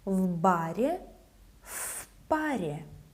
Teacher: voiceless P makes the preposition V sound as F, also voiceless.